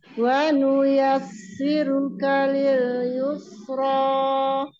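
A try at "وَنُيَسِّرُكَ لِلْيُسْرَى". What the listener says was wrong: Yiruka lil wa nuyassiruka. Ro yang terakhir sudah tebal, ro yang pertama belum tebal. Wa nuyassiruka lil yusra. Wanuyasiru tipis tebal tipis ya. Jadi si-nya tipis, ro-nya mau tebal, kaf-nya dia tipis lagi, tipis lil yusro. Nah, dari ro yang terakhir dia mau tebal lagi gitu sih.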